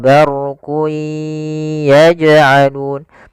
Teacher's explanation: jim ada bacaan qalqalah, yaitu huruf jimnya memantul, maka dipantulkan huruf jimnya